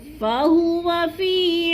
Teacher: واو کو لمبا نہیں کرنا کیونکہ اس کے اوپر زبر ہے